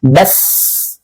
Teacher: Nah, ketika bas, dan dia memiliki sifat apa? Sifat hams, dan dia mengalir udaranya.